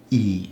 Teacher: I is pronounced e never like an English I